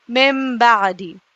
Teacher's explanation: اب یہاں پر جہاں بھی یہ با آتا ہے نون ساکن کے بعد یا پھر تنوین کے بعد، تو یہاں پر نون کو سائلنٹ کر کے میم کو پڑھا جاتا ہے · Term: اقلاب